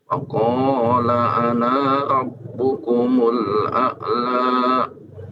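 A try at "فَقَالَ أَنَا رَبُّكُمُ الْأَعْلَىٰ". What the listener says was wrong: Baik, anaknya dipendekkan.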